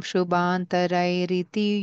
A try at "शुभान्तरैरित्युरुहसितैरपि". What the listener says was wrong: Don't say riti. No, cannot say riti, no. Shubhantarairityurahasitairapi.